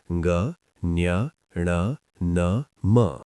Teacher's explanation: नासिक्य वायु नासिका मार्ग से बाहर आती है, जैसे ग, ञ, ण, न, म।